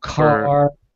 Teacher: It's just, it's at the rear of the hard palate, which is close to the soft palate.